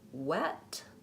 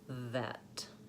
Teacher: I'm doing the W sounds first with the rounded lips the V sound second with no rounding